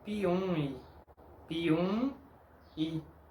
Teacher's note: Como se puede ver, la M es parte de la sílaba anterior, no de la próxima sílaba. Esta M nasaliza la letra U, pero no tiene sonido de mi con la letra I.